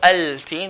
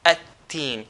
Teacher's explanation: We're not going to pronounce the lam.